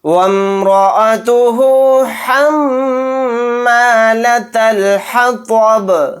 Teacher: میم کے اوپر تشدید ہے تو یہاں پر غنہ کر کے پڑھیں گے